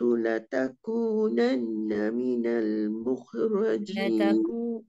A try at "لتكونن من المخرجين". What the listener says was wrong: لتكونن من المخرجين. دengung dulu. لتكونن